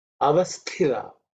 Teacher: 2nd letter in the tha varga, it has to be aspirated